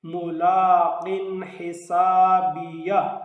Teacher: تنوین کے بعد حروف حلقی میں سے حا ہے، اس لیے یہاں اظہار ہوگا